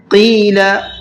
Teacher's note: قاف کو منہ بھر کے پڑھنا ہے اور کھینچ کر کے بھی پڑھنا ہے